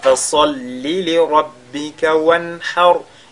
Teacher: Et wanhar, ce sera la même chose que al-kawthar. Le ra sur lequel on s'arrête est précédé par al-fatha, il est donc lu avec at-tafkhim.